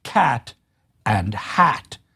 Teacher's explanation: This is a midfront vowel and it is the vowel characteristically in the in the American pronunciations of the words cat and hat. Now in British English, these tended to be pronounced with an a sound rather than an e sound